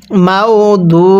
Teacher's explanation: দু পেশের পরে ওয়াও সাকিন এক আলিফ টানতে হয়